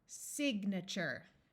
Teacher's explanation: this a is going to schwa which means it will have a muffled uh sound · This A is going to schwa, which means it will have a muffled sound. Signature. The A in this word and the other versions of it with suffixes will also schwa.